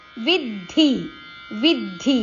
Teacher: ವಿ ಅಕ್ಷರದ ಮೇಲೆ ಆಘಾತ ಇದೆ ಧ ಮಹಾಪ್ರಾಣ ಅಕ್ಷರ